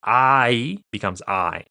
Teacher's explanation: I is a combination of something like a ah sound plus an e sound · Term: diphthong